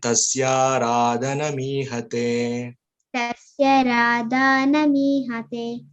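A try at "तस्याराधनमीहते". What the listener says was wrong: First ye you are not extending.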